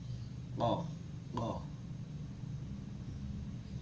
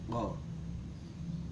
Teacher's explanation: Kof sendiri keluar, makhrajnya keluar dari pangkal lidah dekat dengan anak lidah dan mengarah ke atas serta menepati langit-langit mulut atas. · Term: aksal lisan